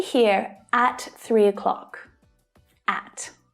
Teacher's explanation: So by stressing at, I'm adding emphasis. I'm making the meaning stronger.